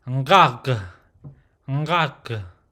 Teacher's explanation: you'll hear that nasal sound I just produced, and then followed by the guttural throat sound, no jaw movement. Now again, there's no English equivalent word here, but like I stated, it's more like a Hebrew, Arabic, and a bit of French sound with a guttural sound there.